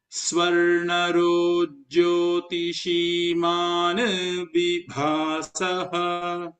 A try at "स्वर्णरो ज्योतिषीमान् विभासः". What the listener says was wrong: There should be a slight pause after that. Man is halantam. And then vibhasaha is a separate word. Yeah, there is a comma there, correct?